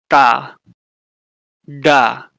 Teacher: Retroflex, so curl your tongue back.